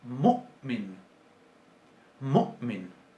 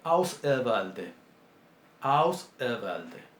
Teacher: Es una oclusión glotal, se llama oclusión glotal, literalmente. Es una interrupción abrupta del flujo de aire en la garganta.